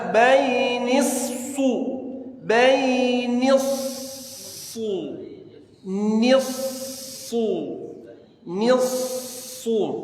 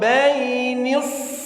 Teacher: harus langsung monyong shad syiddahnya